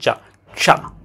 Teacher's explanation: প্রথমে জিউবাটা ওখানে নেন। অ্যালভিওলার রিজের পরের অংশে নেন। তারপরে উচ্চারণ করার চেষ্টা করেন চা। চা। দেখবেন একটা স এর মতো ভাব আসে। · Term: পোস্ট অ্যালভিউলার